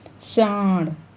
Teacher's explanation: इसके उच्चारण के समय हवा नाक से तथा मुख दोनों से दबाव के साथ बाहर निकलती है। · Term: अनुनासिक